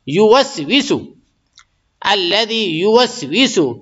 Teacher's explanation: ویسو ذرا بھی نہیں کھینچنا ہے، جلدی بولنے کا ہے